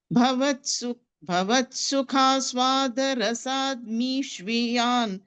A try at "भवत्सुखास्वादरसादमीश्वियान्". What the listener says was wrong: No, you're leaving out one letter. Sada, dal.